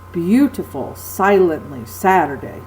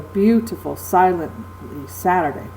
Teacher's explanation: an accented syllable followed by two unaccented syllables